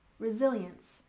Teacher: resilience with stress on the second syllable